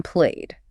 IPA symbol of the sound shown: d